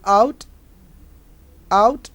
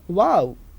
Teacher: Glides from back unrounded towards the central rounded. Back unrounded because a is back vowel.